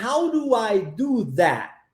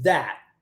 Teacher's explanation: interessante também a omissão do último T na pronúncia · a gente omite o som do T